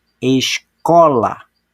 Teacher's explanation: observaram que o có foi falado com mais intensidade Ness desse nesse caso então o có é a sílaba tônica